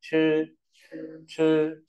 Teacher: CH ở giống TR, ta bật nhẹ hơi này